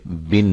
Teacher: آواز کو بڑھایا نہ جائے، جیسے بن سے بین نہ بن جائے بلکہ بن ہی پڑھا جائے، ٹھیک ہے۔ نیز اسے مجہول بھی نہ پڑھا جائے۔